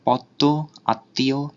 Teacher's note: দয়ের দ্বিত্ব উচ্চারণ আর তয়ের দ্বিত্ব উচ্চারণ হচ্ছে, আর উচ্চারণও কিছুটা নাসিক্য হচ্ছে